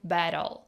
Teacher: He uses a flap t, which is more common in North American English.